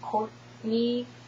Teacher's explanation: the T in the middle of the word is a stop, but it's unreleased, so it's like Courtney, and I really hate that.